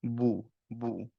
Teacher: যখন দম্মা বলছি, তখন অ্যাকচুয়ালি আমাদের লিপসটা রাউন্ড হতে হবে।